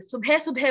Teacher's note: लेकिन अगर आप कह रहे हैं और अगर आप उसका इस्तेमाल अपनी भाषा में कर रहे हैं, अब तो आप सुबह सुबह बोलते हो, इनफैक्ट ब भी नहीं बोलते, सुबह सुबह बोलते हो, भ हो जाता है वो